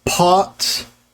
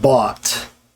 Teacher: with the p sound that's what's called an unvoiced consonant because you release your lips before you start the voicing